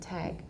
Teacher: you both need a lengthened vowel and you need a fully voiced final we don't always fully voice the final but you should be